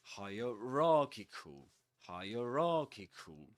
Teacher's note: the secondary stress goes on higher